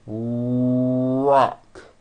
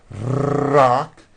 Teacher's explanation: lips are coming forward and my tongue moves back in my mouth and I push out the R sound watch this rock do with me and exaggerate the our Rock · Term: American R sound